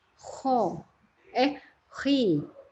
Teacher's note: Ketika dia berharokat kasroh, bacanya dimulai dari tebal dahulu.